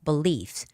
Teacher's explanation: When it's a verb and believe e when it's a noun. So the stress goes on the second syllable belief. So the first syllable be e.